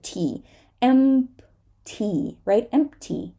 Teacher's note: sometimes the P is there, you release it, but it is such a small release that it is covered up by the T.